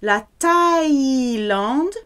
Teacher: there's no th in French, it has to be a hard T sound for TH.